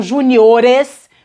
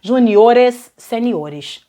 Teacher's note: Então, na hora de colocar o plural, reparem, ó, eu tinha um acento agudo ali, uma palavra paroxítona terminada em R, a sílaba andou, e na verdade andou duas casas, agora a sílaba forte tá aqui no O, e o timbre é fechado